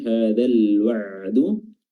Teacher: lam sukun di sini adalah lam izhar qamariyah. Ya, lamnya dibaca izhar, dibaca jelas.